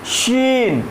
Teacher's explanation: अपनी जबान को थोड़ा तालू से टाइट करके डीपली टच करना पड़ता है और उससे एक लाइटली सिसकिया निकालनी पड़ती है, लाइटली सिसकिया निकालनी पड़ती है। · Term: बड़ी शीन